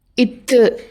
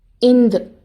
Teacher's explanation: நாக்கோட நுனி மேல் பல்லோட அடிப்பகுதியில் விரிஞ்சு நல்ல அழுத்தமாக தொடும். இத்து அப்படின்னு சொல்கிறப்ப காற்று வெடித்து வாய் வழியாக வெளியேறும். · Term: பல்லொலி